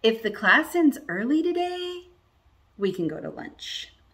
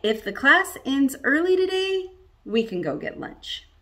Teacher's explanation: it goes up before the main clause and down after that main clause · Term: rising and falling intonation